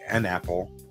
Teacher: if you say an apple it can be all kind of one sound and it all merges together very well